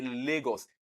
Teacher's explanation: the sound la in Lagos is coming from one side of the mouth. That is a lateral sound.